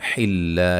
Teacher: لفظ اللہ کے لام کو باریک پڑھیں گے